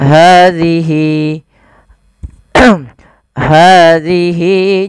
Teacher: Nah, apabila ada ha dhamir setelahnya bentuk seperti ini kita namakan dengan mad silah qasirah. Panjangnya adalah 2 harokat sebagaimana mad tabi'i.